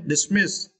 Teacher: And that was dismiss, it is verb. And for this word, you need to stress the second syllable, miss, okay, dismiss